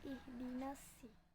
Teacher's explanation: sedangkan sin itu merupakan huruf tarkik yang dibacanya lebih tipis